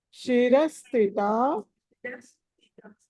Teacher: ఇక్కడ శిరస్థితాలో థ అన్నది త థ అది ఒత్తి పలకాలి మహాప్రాణము